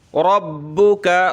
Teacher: رَبُّكَ، رَبَ زبر رب پیش بو، رب کاف زبر کا، ربک، را پہ زبر ہو پیش ہو تو ہمیشہ اس کو موٹا کیا جائے گا